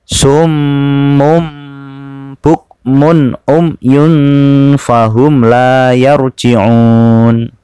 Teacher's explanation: berbunyi huruf mim dan berdengung lamanya satu setengah Alif atau tiga harokat